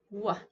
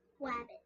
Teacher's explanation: And sometimes when a kid makes an R sound, they are trying to use their lips